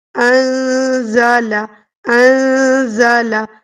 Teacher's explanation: جب بھی نون ساکن یا تنوین کے بعد زا آ جائے تو پھر نون کی آواز کو چھپا لیتے ہیں ناک میں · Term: حروف اخفا